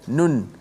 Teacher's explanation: Memang nun tu kalau sebut tu, kalau kita sebut nun saja kan, nun. Memang bukan sekadar hujung lidah kita naik ke langit huruf nun tu, tapi suara keluar nun tu, suara tu keluar daripada hidung, itulah suara gunnah